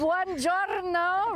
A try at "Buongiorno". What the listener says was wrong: Rolling the R's? You must roll the R.